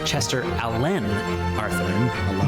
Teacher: chose to pronounce his middle name with the emphasis on the second syllable so he is actually Chester Allen Arthur Grover Cleveland was both